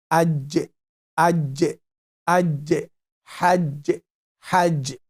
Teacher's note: Aj, aj, and touching the upper palate. Middle part of the tongue, touching the upper palate. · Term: letter Jiim